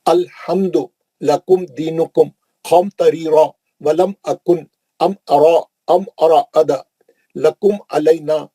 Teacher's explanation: میم کو جلدی پڑھنا ہے، میم کا غنہ نہیں کرنا ہے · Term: اظہار